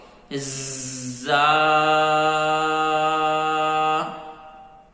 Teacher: زا کی آواز سختی سے اور باریکی کے ساتھ ادا ہوتی ہے، اس کو آپ نے بھاری آواز سے یا موٹی آواز سے ادا نہیں کرنا